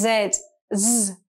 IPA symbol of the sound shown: z